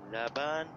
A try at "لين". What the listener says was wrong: لین، یہ یا ہے.